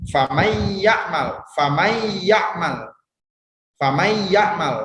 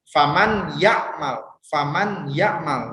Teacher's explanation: Nah, nun matinya itu seperti tidak ada. Jadi bukan seperti idhar yang dibaca jelas.